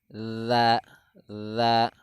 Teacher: Huruf za itu ialah ujung lidah menyentuh ujung gigi seri atas beserta punggungnya.